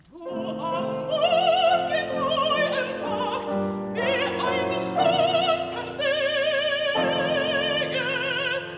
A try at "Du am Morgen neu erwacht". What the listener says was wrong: Sorry, Sieges is a little under. Say Sieges.